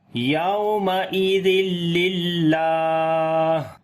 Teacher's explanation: کو لمبا کریں گے، کھڑی زبر ہے اس کے اوپر، اور جب یہاں پر رکیں گے تو ہا کے اوپر صفت ہمس ہوگی، تو سانس جاری کریں گے ہا کے اوپر